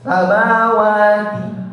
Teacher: dia juga harus berdesis, ya, atau hams keluar udara, tapi nggak boleh itbaq, nggak boleh melekat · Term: sifatul huruf